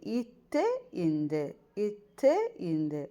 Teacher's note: நாவின் நுனி வந்து மேல்வாய் பல்லின் அடியை முட்டுது நாவின் நுனி வந்து மேல்வாய் பல்லின் அடியை வந்து முற்றுது.